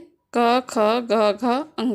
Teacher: कंठ से क क ग घ अंगा का उच्चारण हो रहा है